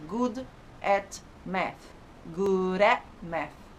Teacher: Esses T's e D's que são seguidos de vogais, a gente também junta na palavra só.